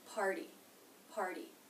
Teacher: note that the T in party is a flat T. Now you know that because it comes after an R consonant and before a vowel.